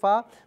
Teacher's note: اوپر کے دانتوں کے کنارے اور نچلے ہونٹ کے تری والے حصے سے ادا کیا جائے گا۔ اوپر کے دانتوں کے کنارے کو نچلے ہونٹ کے تری والے حصے سے ملائیے اور آپ ادا کرنے کی کوشش کریں۔